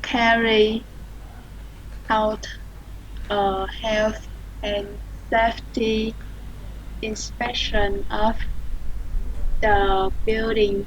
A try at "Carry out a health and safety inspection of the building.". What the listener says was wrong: Rồi, good. Perfect.